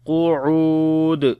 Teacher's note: Qaf we read in heavy sound. U we long. Waw madda is there.